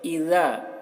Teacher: ذال کو باریکی کے ساتھ ادا کریں گے۔ اذا، اذا بولیں گے، اذا نہیں۔